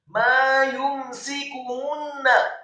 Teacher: Mimnya dibaca fathah 2 harokat karena setelahnya ada alif.